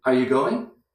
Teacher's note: That's one little group spoken together. Weak, weak, strong.